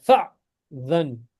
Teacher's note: हमजा जो है उसके ऊपर सुकून है so it's got a glottal stop इसके ऊपर glottal stop आ जाएगा glottal stop यानी कि बिल्कुल इस पे जर्क मारना है फअज़न पढ़ो शाबाश Sir, how could he?